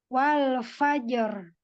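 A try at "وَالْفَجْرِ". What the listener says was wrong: Ro-nya tidak terlalu banyak, wal fajar tidak terlalu banyak. Ya, takrirnya.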